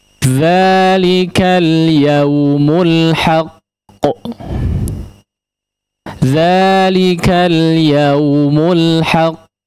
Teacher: Di sini huruf qalqalah, ya, atau sifat qalqalah, ya. Sifat qalqalahnya agak telat sedikit, ya, karena memang bertasydid